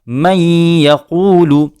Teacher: نون کی آواز یا میں مل کر ایک طریقے سے ختم ہی ہو گئی۔ من یقول، نون ساکن کے بعد لفظ یا آیا، ہم نے نون ساکن کو یا میں ملاتے ہوئے اس کا ادغام کیا اور وہاں پر غنہ بھی کیا۔